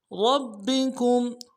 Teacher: گے، دال کو نرم سے ادا کریں گے، عند ربکم، ربکم، را کو موٹا کرنا ہے، با کے ساتھ ملائیں گے، با کے اوپر تشدید زور دیں گے